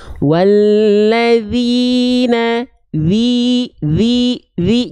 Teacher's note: harakat kasrah harus dengan mengangkat bagian tengah lidah kita sekarang teman-teman angkat Tengah lidahnya pasti vokal i-nya jelas terdengar